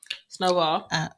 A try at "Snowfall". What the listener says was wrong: You said ball. You said Snowball.